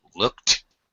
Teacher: following a K in the past tense Ed will make a t sound